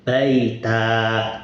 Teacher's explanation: Nah, ini t-nya tak terbuka. Kalau dia waqaf, maka bacanya menjadi panjang alif baita.